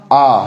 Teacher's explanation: जब भी बोलेंगे ना तो जीभ का आगे का हिस्सा का मूवमेंट नहीं रहेगा, पीछे के हिस्से में प्रेशर लगेगा और आ निकलेगा। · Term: पश्च स्वर